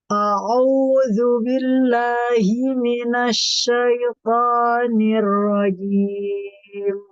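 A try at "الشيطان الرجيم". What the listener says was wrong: Toknya tebalkan sedikit lagi. Asyaitonir rajim. To, to.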